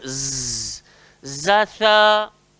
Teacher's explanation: Ada pun yang hujung sekali tu ada zatha. Jadi huruf zai ni, tempat keluar dia hujung lidah, langgar belakang gigi bawah. Jangan gigit. So dia kena berdesir. Z, zatha. Cuba sebut.